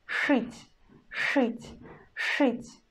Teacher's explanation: we again pronounce ш in a hard way, and then we pronounce not e but u